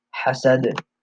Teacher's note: وَمِن شَرِّ حَاسِدٍ إِذَا, and then the word hasad, the ha fatha and the sin fatha. Hasad, and the dal has a qalqala, so you make that bouncing sound